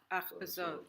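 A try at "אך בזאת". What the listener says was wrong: That's three syllables. And you have to go ach bezot, right? Ach bezot. You have to smush more syllables, right?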